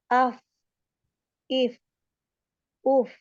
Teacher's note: Jadi ujung gigi seri atas nempel di perut bibir bagian bawah.